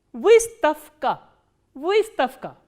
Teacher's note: The voiced consonant will be pronounced as its voiceless counterpart, which is f.